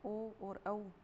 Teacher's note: ओ और औ का उच्चारण स्थान कंठ ओष्ठ और ध्वनि है कंठोष्ठ्य।